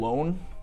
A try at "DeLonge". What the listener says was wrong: it's got a G in it. The G is silent. G-E, N-G-E.